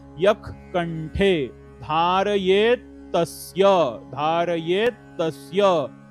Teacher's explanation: खालची ओळ काय बघा. यक कंठे, यच्या समोर विसर्ग आहे, विसर्गाच्या समोर क हे अक्षर आहे, त्यामुळे याचा उच्चार जो काही आहे तो ख मध्ये होतो.